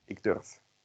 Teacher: If you chop off en, you get ik durf, but we don't want a v at the end, so we make it an f.